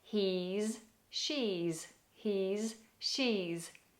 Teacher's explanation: Notice how those S's have a little bit more depth. They're more like Z's, but don't go too far.